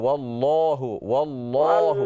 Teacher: लाम को मोटा कीजिए